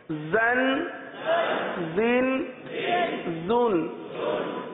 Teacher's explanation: سیٹی کی طرح، دونوں دانت کو آپس میں ملاتے ہیں ز میں اور زبان کی نوک نیچے لگاتے ہیں، نیچے کے دانتوں کے حصے پہ لگاتے ہیں۔